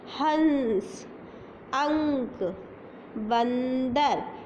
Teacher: ऊपर बिंदु लगता है उनका उच्चारण करते समय गले में में आने वाली वायु नाक के रास्ते से निकलती है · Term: अनुस्वार